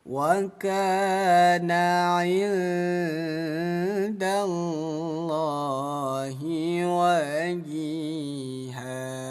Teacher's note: Nun sukun bertemu dal, hukumnya ikhfa. Dibaca samar, 2 ketukan.